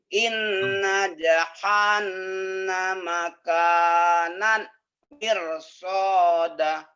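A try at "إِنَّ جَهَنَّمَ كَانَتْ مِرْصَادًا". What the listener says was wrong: Tuh, mirsoda panjang ya. Itu bagus Pak. Jangan pakai lagu dulu ya. Pakai lagu Bapak udah bagus, udah merdu. Cuman kadang-kadang itu tadi Pak, kalau kalau lagu kita jadi terbuai. Jadi makrajnya belum kena, lagu diutamakan.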